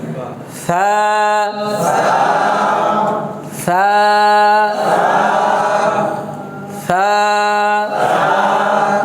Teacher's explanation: 2 নম্বর দেখেন এখানে তিনটা হরফ সা সিন স, তিনটে সিনের উচ্চারণ মানে স দিয়ে বাংলা আমরা যে স উচ্চারণ করি, তাহলে এখানে এই সাটা হচ্ছে জিহ্বার আগা সামনের উপরে 2 দাঁতের আগার সাথে লাগবে, কেমন নিচে জিহ্বার আগাটা শুধু 2 দাঁতের আগার সাথে লেগে হালকা করে একটু নরম করে ছেড়ে দিতে হবে, কেমন কোনো প্রেসার দেওয়া যাবে না।